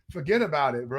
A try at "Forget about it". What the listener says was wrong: It's spelled different. There's no R. Just straight. No fat on that one.